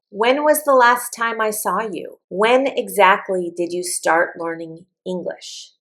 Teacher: My voice will go up and then it will go back down. · Notice my question is not starting with a verb and my intonation goes down. When my intonation goes down and it's not starting with a verb, the answer is information.